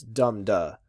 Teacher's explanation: So you have this da-dum sort of feel. And then in the trochee, the first syllable is stressed more.